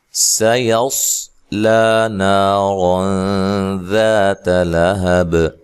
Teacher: سین کو باریک سیٹی سے ادا کرنا ہے، صاد کو موٹی سیٹی سے پڑھنا ہے لیکن ہلانا نہیں ہے.